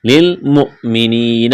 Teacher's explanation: حمزہ ساکن ہے، حمزہ سے پہلے والے حرف کو حمزہ کے ساتھ ملائیں گے، جھٹکا دیں گے۔ للمؤمنین، یا مدہ ہے، الف کے برابر کھینچنا ہے۔